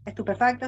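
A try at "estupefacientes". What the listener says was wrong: Estupefaciente. No, léela nada más, es que dijiste estupefacto. Es estupefaciente.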